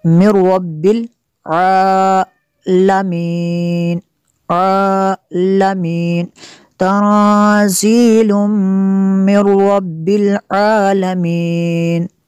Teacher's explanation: یہاں پہ نون ساکن کے بعد را ہے حروف یرمالون میں سے، تو یہاں پہ را اور لام میں غنہ نہیں کرتے